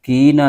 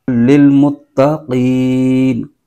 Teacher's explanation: ھدی للمتقین، متقین، تا پر تشدید ہے، اس کو بھی جما کے پڑھیں گے، مت، اور آگے قین، قاف نقطے والا ہے، موٹا قاف ہے تو اس کو پر آواز کے ساتھ پڑھنا ہے۔ تو بعض لوگ قاف کی جگہ کیف بریک آواز کے ساتھ پڑھ جاتے ہیں۔